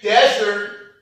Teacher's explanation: Desert has a noun and a verb form with different meaning. If we say desert and we put the stress on the first syllable, it is a noun.